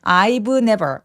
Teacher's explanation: I've never를 약간 f처럼 바람 소리만 느껴지게 해 주시면 좋아요. 자음 앞에서의 V 소리는 아주 가볍게 F로 발음한다.